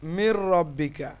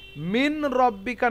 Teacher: নুন এবং র মিলে গিয়ে মিন রব্বিকা না হয়ে এখানে মির রব্বিকা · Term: ঈদগাম বিনা গুন্না